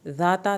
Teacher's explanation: ता की ज़बर लंबी ना हो,